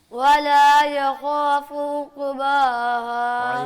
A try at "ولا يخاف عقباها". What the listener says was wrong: عین کی آواز نکالو. ولا يخاف عقباها.